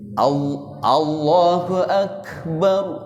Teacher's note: Makanya kalau kita baca Allahu Ak. Jadi bukan dibaca ak saja tapi masih ada napas mengalir.